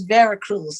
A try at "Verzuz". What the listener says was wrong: how is it Veracruz? It's literally Versus. The show is called Versus, not Veracruz. Do you see any CRUZs in there? It's called Versus. It's called Versus. It's called Versus.